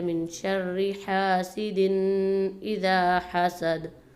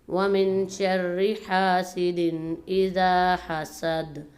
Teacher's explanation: حسد کی دال پر قلقلہ ہو رہا ہے